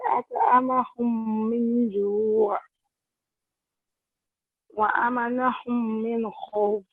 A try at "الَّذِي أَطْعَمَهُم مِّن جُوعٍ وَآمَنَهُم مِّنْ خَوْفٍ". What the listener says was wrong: Now, you are also not giving due recognition for pause, for the pause. الذي أطعمهم من جوع وآمنهم من خوف. That pause is quite important. أطعمهم هم من جوع. Yeah, you can break it.